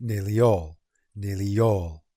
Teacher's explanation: between nearly and all we have the intrusive y to make nearly all